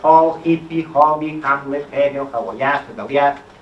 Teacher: l'H se sol pronunciar, o sol conservar la pronúncia H aspirada de la llengua originària